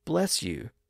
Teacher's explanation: the s sound at the end of bless flows into the Y sound